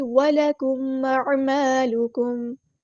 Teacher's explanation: میم ساکن پر اظہار شفوی ہوگا، ٹائم نہیں دینا. أَعْمَالُكُمْ، حمزہ کی آواز واضح ادا ہونی چاہیے.